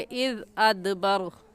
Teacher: ऐसे ही वल लैलि इज़, दाल नरम हरूफ में से नरमी से पढ़ेंगे, इज़ अदबर, दाल पर कलकला करेंगे क्योंकि हरूफ कलकला में से है